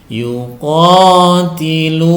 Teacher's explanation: domah diikuti dengan wau sukun sehingga dibaca panjang dua harakat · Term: Mad thobi'i